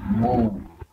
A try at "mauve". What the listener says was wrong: not move, mauve. Like oh, mauve.